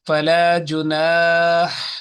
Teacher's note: the sharpness of ha should come right in the middle of throat